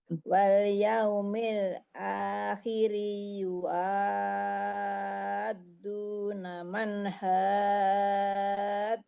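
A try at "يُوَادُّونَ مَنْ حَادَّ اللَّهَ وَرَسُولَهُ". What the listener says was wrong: Iya, bukan yua tapi yuwa. Sekarang dari yuwa ya. Yuwaduna man haddallaha wa rasulah.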